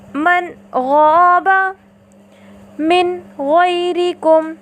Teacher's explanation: نون ساکنہ کو اس کے مخرج اور صفات کے ساتھ ظاہر کر کے پڑھا